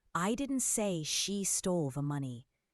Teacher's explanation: Emphasizing I suggests someone else said it. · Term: sentence stress